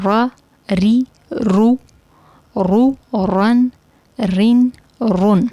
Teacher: را موٹا پڑھیں گے لیکن ہونٹ گول نہیں کرنے · را ادا کرتے وقت زبان کو وائبریشن دیں گے تو را ادا ہوگا، لیکن نون اور لام کے کیس میں اس طرح نہیں ہے، صرف را، ٹھیک ہے۔